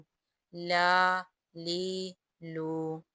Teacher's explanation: لام زبان کے کنارے اور زواحق سے ثنایا اولیہ تک مقابل کے تالو سے ادا ہوتا ہے۔